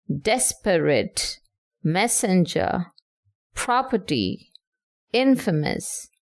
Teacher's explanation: Next you have dactyl in which you have one stressed syllable followed by two unstressed syllable such as desperate, messenger, property, infamous.